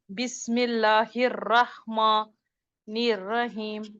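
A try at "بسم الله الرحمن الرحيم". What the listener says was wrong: नहीं, आपकी "माँ" का वजन बढ़ रहा है। " माँ" नहीं।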